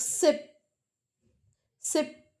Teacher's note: तो then for last पी puff of air बनता है